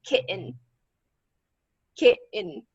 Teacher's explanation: glottal stop in the middle like the sound uh oh